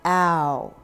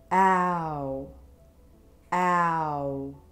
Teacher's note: it starts at olive olive sock a and moves up ow we call this a moving vowel because it starts in one position and ends in another